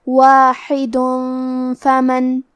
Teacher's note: لیکن یہ کلمہ کو پوری آیت کے ساتھ ملا کے پڑھے تو کیونکہ اس پہ تنوین پیش ہے، پھر حرف الفا آتا ہے کلمت فمن اور فا حروف الاخفاء میں سے ہے تو ہم یہ حکم کو غنہ کے ساتھ ادا کریں گے